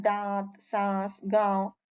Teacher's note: इसमें बोलने में हवा नाक और मुंह दोनों से निकलती है इसमें इन ध्वनियों के लिए चंद्र बिंदु प्रयोग होता है यह · अनुनासिक चंद्र बिंदी लगती है, इसमें बोलने में हवा नाक और मुंह दोनों से निकलती है।